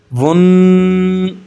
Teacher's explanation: غنہ کہتے ہیں ناک میں آواز کو 1 الف کے برابر دبا کر رکھنا ، ون، یہ جو ساؤنڈ ہے یہ غنہ کی ہے، اب